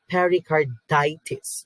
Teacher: We need to emphasize ditis in this medical term.